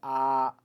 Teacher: मध्य स्वर जिसको हम अपने जुबान के अपने जीभ के बीच वाले हिस्से से करते हैं